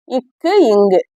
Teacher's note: நாவின் முதல் பகுதி அன்னத்தின் அடிப்பகுதியில் பொருந்துவதால் பிறப்பது